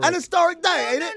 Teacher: the H is silent for for them over there across the pond